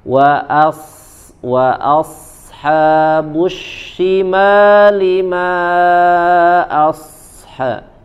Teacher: Dia sama dengan huruf sin, as, tapi ditebalkan, ya, suaranya, karena satu makhraj hanya berbeda sifat. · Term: huruf sod